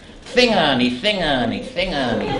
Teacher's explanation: as said with the lisp common to speakers from the north of Newfoundland